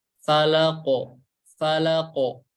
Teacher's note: Dikarenakan huruf qaf ini huruf tebal, maka pantulan suaranya lebih ke fathah. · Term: dipantulkan